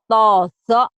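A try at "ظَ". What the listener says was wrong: Kurang mantap zo-nya ya. Zo-nya kayak zok. Kayak zok. Kayak ditekan. Padahal zo. Biasa aja zo.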